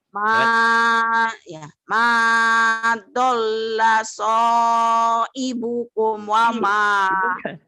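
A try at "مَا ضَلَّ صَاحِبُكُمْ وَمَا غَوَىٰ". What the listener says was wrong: Ibu kalau H tuh suka jadi I ya. Kenapa tuh Bu? ibukum.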